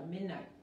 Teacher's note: si no hay una consonante o otra palabra después, la T casi no se escucha